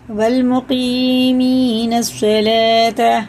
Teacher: الف اور لام حرف شمسی میں سے، تو یہ نہیں پڑھے جائیں گے، اور یہ واو بھی نہیں پڑھنے میں آئے گا.